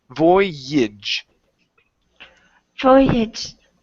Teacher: the AGE at the very end is actually pronounced as an IJ